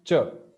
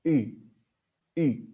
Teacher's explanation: while you pronounce CH the tongue is actually touching uh the pallet but while pronouncing e it's just going in the direction and it's not actually touching so that's why uh it's USI there is no contact of